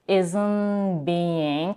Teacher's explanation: She is dropping the t and she is going straight to the b in the next word.